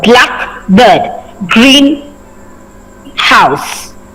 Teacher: So here you are actually, like black is a color, and you will not be stressing on you will be stressing on the first part. So here you'll be stressing for black and green, not on bird or house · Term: compound word